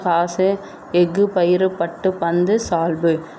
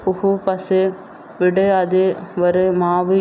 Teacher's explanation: 6 வல்லின உரங்களும் சொல்லின் இறுதியில் வரும்பொழுது ஒரு மாத்திரைக்கு பதிலாக அரை மாத்திரை அளவே ஒலிக்கும். இவ்வாறு தனக்குரிய ஓசையிலிருந்து குறைந்து ஒலிக்கும் உகரங்கள் வந்து குற்றியலுகரம் அப்படின்னு சொல்கிறோம்.